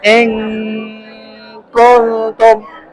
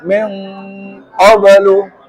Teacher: Lah kalau ketemu qaf itu angnya menebal. Min qablu. Kalau kaf tipis.